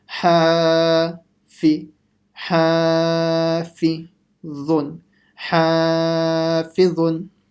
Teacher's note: Everything else has to be quick. Only the alif letter will be long.